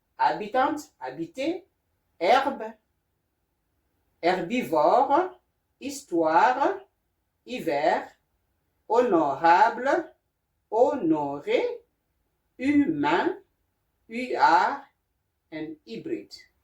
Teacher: so the sound H, A is A, HE is E, HI is I, HO is O, HU is U, and HY is I. The H here is silent